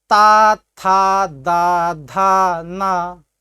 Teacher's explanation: ध्यान दीजिए, आपकी जो जिह्वा है, यह जिह्वा दांत से स्पर्श कर जाती है। अर्थात इस सा को बोलते समय अपनी जिह्वा को दांत से सटाइए और बोलिए सा, तो शुद्ध छोटा सा का उच्चारण हो जाता है। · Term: तवर्ग